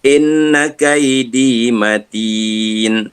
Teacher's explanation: In kena baca 2 harakat dengung. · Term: wajibul gunnah